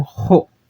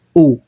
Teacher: Se fosse uma aspiração branda, não teria nenhum H, seria normal. Mas como é uma aspiração áspera, eu vou ter que ter um H e vou ter que pronunciar como ro, e não como o, ro, tá bom?